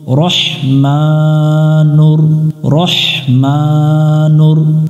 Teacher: র এখানে জবরে আকার পড়া যাবে না, রা পড়া যাবে না, এখানেও শাপলা ফুল দেখে আমরা মোটা করে নিব।